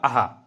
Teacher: अः को विसर्ग कहा जाता है। ठीक है और ये आपका विसर्ग है ये कंठ से उच्चारित होता है।